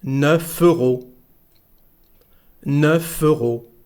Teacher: we have a liaison here between 9 and euro, so we say 9 euros.